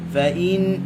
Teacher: nun gunnah dengan 2 harakat